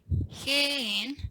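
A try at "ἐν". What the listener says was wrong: Nope, no breathing there.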